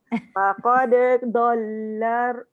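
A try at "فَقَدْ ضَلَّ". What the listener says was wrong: Pelan-pelan. Dia jadi susah sebab dal ni dia lantun nipis. Lepas tu dot tu dia tebal. Nipis nak pergi tebal tu saya faham. Payah. Dia tak boleh masuk. Faqad bol dia tak boleh. Dia kena lantun juga dal. Sebab nampak dal dengan dot ni macam sama tempat keluar. Tapi lain. Dia bukan adik-beradik. Sepupu pun tidak.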